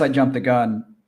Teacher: jumped stops in a T sound followed by TH sound. So that hard T sound just drops out. So jump the gun, push it all together.